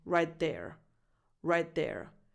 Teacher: So I'm pronouncing a slightly stronger voiced TH